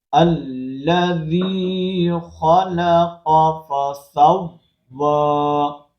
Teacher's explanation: قاف کو ہم پر کریں گے اور یہ مشدد ہے، مشدد کو ہم نے صحیح طرح ادا کرنا ہے۔